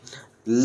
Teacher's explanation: जब ला का उच्चारण करते हैं तो हमारी जीभ ऊपर की तरफ उठ जाती है और मुड़ जाती है, और मुड़ने के बाद दोनों तरफ से सांस बाहर निकलती है तो अगल बगल हो जाता है। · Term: पार्श्विक ध्वनि